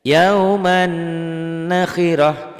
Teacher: Yauman nakhiroh itu jadi ditahan, jadi ada idgham bigunnah. Diidghamkan, didengungkan, disertai dengan dengung. Ada madnya, ada panjangnya.